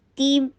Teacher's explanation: باریک ہوگا، لیکن یہاں ہیوی ہے، تیم، تا کے نیچے کسرہ، پھر تا کی آواز سختی کے ساتھ ادا کر کے نیچے کسرہ کے لیے ای کی ساؤنڈ دیجیے ، تیم، تی کر کے اور پھر میم کے ساتھ ملائیے،